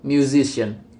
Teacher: the stress moves to the syllable immediately before the suffix, producing musician. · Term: stress-attracting suffix